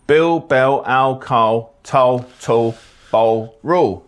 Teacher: this is called L vocalization that means the L turns into a vowel the exact vow it becomes depends on the one before Bill